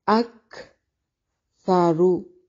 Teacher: کاف کو باریک سا کو نرم اور را کو موٹا پڑھیں گے